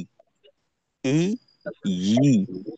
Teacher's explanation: হামজাটা হলো হলকের শুরু থেকে হয়